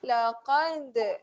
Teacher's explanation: qalqalah. Yes, ada sifat lantunan yang perlahan, lantunan yang kecil